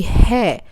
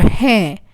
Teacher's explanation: hai without a nasal sound is casual, and hai with the nasal sound is respectful